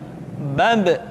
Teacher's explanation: Ketika mati, maka terdengar suara pantulan. Bab.